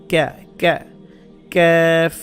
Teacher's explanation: জিব্বার গোড়া যেখান থেকে উচ্চারণ করছেন তার একটু সামনের দিকে আনলে যেটা হয় সেটা হচ্ছে ক্যাফ